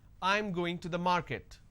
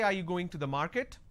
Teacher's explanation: your statement has to be flat and when it's a question the last word has to be a rising tone · this is a statement and it's a flat intonation but when I say are you going to the market then it's a rising tone